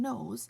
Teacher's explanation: both called nose sounds because when you make them, air travels from your lungs up through your nose